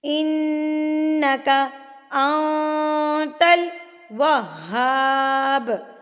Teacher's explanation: ان پہ ہم نے آواز کو ناک میں روکا اور پہ ناک میں آواز کو چھپا لیا، انت الوہاب، واو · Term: گنہ